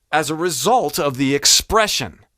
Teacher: So if I even say that word, those phrases again, as a result of the expression. Result went up a little bit, expression went down a little bit, expression a little bit more guttural.